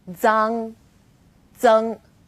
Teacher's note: Its pronunciation is quite similar to the DS sound in English, like cards, but you need to move the tip of your tongue closer to the back of your teeth